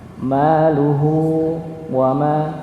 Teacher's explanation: Berikutnya ayat yang kedua, ma aghna anhu maluhu. Nah, di sini ada huruf ha yang dipanjangkan 2 harakat.